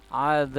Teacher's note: harokat hukum bacaan Mad Arid lissukun ya kemudian hurufba di belakang disukunkan dan dipantulkan qolqolah kubro